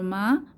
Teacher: মা ঠোঁটের ভেদ শুকনা জায়গা থেকে